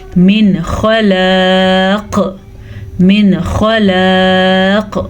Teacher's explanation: تو یہاں پہ ہم وقف کریں گے، وقف کی وجہ سے قاف ساکن ہو جائے گی، اور ساکن قاف جب بھی ہوگی تو قلقلہ بنے گا